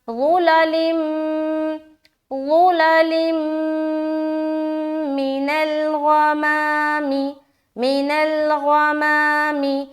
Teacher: یہاں دیکھیے میم آ گیا نا اس میں سے، تو یہاں پر پھر ہم غنہ کریں گے جو کہ ہے ادغام ناقص کا غنہ